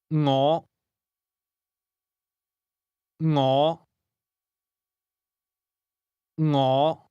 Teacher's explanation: This word begins with a soft ng sound, something like the end of the English word singing.